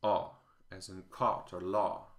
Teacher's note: This sound is a, as in caught or law. It's a rounded vowel, and my dialect, Californian, doesn't have it at all. When I say caught, I use the same vowel as in father, caught father, the open-backed, unrounded a.